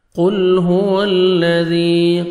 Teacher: قاف کو موٹا کر کے پڑھیں گے، لام کو آپ نے ہلانا نہیں ہے.